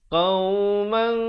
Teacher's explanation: Tapi bila datang kaf, disembunyikan bunyi tanwin atau nun matinya tu, nun tanwin itu disembunyikan di belakang kaf dengan kadar 2 harakat. Tapi tak sampai kaf lagi, kita bawa makhrajnya itu, kita bawa hampir-hampir ke situ. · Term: ikhfa